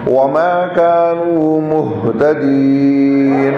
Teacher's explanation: وما كانوا مہتدین میں ہا سینے سے نکلے گا